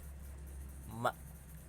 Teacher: Jadi dua perut bibir itu bertemu sehingga menghasilkan bunyi huruf ma.